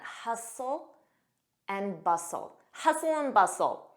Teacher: notice that t is silent